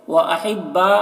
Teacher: وَأَحِبَّا با میں مد متصل، اسے 3-4 الف کے برابر کھینچیں گے۔